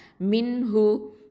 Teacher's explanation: இந்த ஹ அப்படிங்கிறது வந்து அகசல் ஹல்கு, கீழ் தொண்டையிலேருந்து வரக்கூடிய எழுத்து